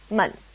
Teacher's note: This demonstrates what some call the fifth tone in Chinese, but it's not really a tone. In Chinese, it's called 轻声, which literally means light sound. It's a toneless tone, or a neutral tone